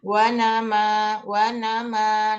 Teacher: Contohnya wa nama, nun sama mimnya berharokat. Nama itu pasti kalau kita pencet hidung kita tetap ada suara yang naik ke hidung